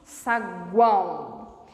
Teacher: somente a boca não dá conta ela precisa de auxílio do nariz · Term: tritongo nasal